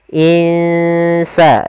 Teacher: Kita samarkan nunnya ke huruf sin. Insa dan itu ikhfanya ikhfa tipis.